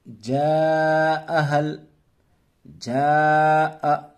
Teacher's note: چونکہ الف مدہ کے بعد حمزہ اسی کلمے میں آیا ہے، اسے 2 الف 3 الف کے برابر کھینچ کر پڑھیں گے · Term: مد متصل